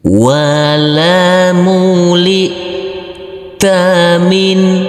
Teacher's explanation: Huruf nun sukun yang bertemu dengan huruf H harus kita baca terang atau jelas untuk huruf nunnya